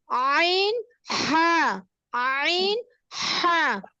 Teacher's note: হলকের মধ্যখান হইতে আইন হা